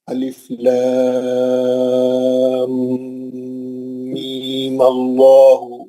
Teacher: میم کا جو دوسرا مد ہے 6 حرکت والا وہ کینسل ہو جائے گا. صرف مد اصلی رہ جائے گا.